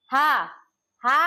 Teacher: हा को हम बोलते हैं स्वर यंत्रीय, कंठ के भीतर स्थित।